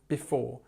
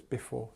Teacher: okay and just remember we've got this word before um and we stress the second part of the word